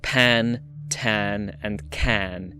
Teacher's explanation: a little puff of air, that we call aspiration